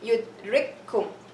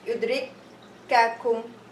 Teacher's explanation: No, it's going to be yudrikum. So the two kafs merge together, and the second kaf will have shadda. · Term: idgham